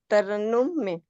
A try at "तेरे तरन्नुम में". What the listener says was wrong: Well done.